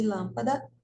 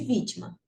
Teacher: mar a antepenúltima sílaba lã de lâmpada e vi de vítima em todas elas a sílaba tônica é a antepenúltima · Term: proparoxítona